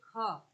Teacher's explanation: ऐसा वर्ण जो कंठ है अघोष है और महाप्राण है